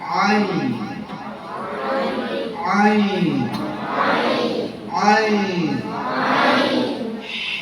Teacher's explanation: Jadi setiap kali kamu mau mengeluarkan huruf a, pastikan asal muasal asal tempat keluarnya huruf ain itu dari tenggorokan bagian tengah